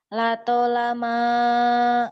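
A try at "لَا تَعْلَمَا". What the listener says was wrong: Itu ain ya. Kalau mim bulat kecil. Ini ain.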